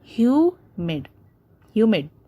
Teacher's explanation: Like the first word, humid. So hue is being stressed a lot, whereas mid, we complete the word mid in just as quickly as possible. Hue. So you can see the comma, okay, the inverted comma which is put after you, that is showing that hue is being stressed more, whereas mid is finished up very quickly. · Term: word stress